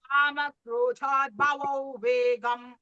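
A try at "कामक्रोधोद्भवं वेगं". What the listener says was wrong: Bagini here, krodho. You are reading Krodha.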